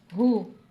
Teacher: اس ہا کو سینے سے ادا کرنا ہے